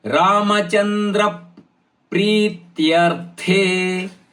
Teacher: ಇಲ್ಲಿ ದ ಮೇಲೆ ಪದ ಆಘಾತ ಯಾಕಂದ್ರೆ ಮುಂದಿನ ಪದ ದೀರ್ಘವಾದ ಪಿ ಮತ್ತು ಪ್ರಿ ಇರುದರಿಂದ